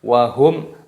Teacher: jadi dibaca jelas tidak boleh didengungkan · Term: izhar syafawi